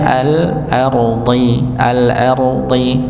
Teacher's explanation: ra-nya tebal, dha-nya juga tebal dengan kasrah